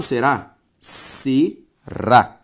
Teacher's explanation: Será tem como sílaba tônica a última, ou seja, uma oxítona.